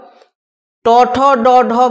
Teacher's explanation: এগুলো উচ্চারণের সময় জীব একেবারে মূর্ধা বা মধ্যতালুতে গিয়ে স্পর্শ করে এবং উচ্চারিত হয় বলে এগুলো মূর্ধন্য ধ্বনি।